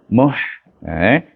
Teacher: bertemu dengan ha yang mati, bunyinya hamas, ha ni muh.